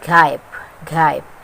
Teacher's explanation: These consonant sounds are produced when the back of the tongue touches the soft palate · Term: velar consonant